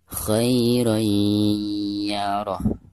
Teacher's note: Jadi cara membaca tanwin yang ada di atas ro tersebut itu harus langsung dimasukkan ke huruf ya disertai dengan gunah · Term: idgham bigunah